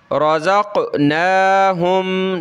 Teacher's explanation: نون کے اوپر کھڑا زبر ہے، ایک الف کی لمٹ میں اس کو اوپر کھینچیں گے. ٹھیک ہے، را کو موٹا کریں گے.